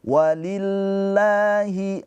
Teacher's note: Mad thobbi'i la panjang dua harakat. · Nah, la lafaz Allahnya ini dibacanya tarkik atau tafkhim. Nah, di sini karena sebelumnya harakatnya kasrah maka dibacanya tarkik